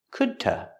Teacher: As fast as I could to. The D at the end of could is a stop D, could, t. Linked to the word to, pronounced t, could t.